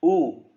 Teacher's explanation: ऊ में होठों का काम होता है, ये ओष्ठ से बोले जाते हैं, होठों से बोले जाते हैं।